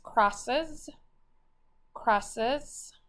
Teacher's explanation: Okay, so this word normally would have a blend, a vowel, and then because it ends with an S, the San Francisco Zoo rule, you would just double that S. But since it's a plural, it has that Z sound, but then crosses, we're going to add an ES and underline it.